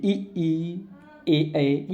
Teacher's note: ये सब जीभ के आगे स्वर से बोलते हैं।